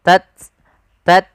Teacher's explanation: hames itu mengalirnya nafas, tidak terlalu banyak, tidak tats tidak, tapi dia tat sedikit aja, tat bukan tats tidak.